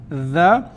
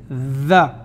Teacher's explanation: la langue se trouve au niveau des extrémités des incisives supérieures